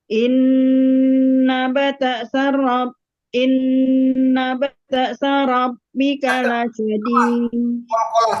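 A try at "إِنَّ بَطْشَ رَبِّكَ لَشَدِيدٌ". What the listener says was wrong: Tak, jangan bato ada ke sini. Bato.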